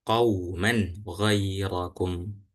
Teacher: karena ini tanwin bertemu ghoin, maka dibaca idhar. Jadi nggak perlu ditahan ya Pak ya.